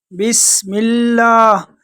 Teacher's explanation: سین میں سیٹی کی آواز نکالیں گے اور لفظ اللہ کو باریک پڑھیں گے